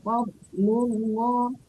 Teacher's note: fad itu tebal tapi tidak boleh mantul ya Bu, nggak boleh fad.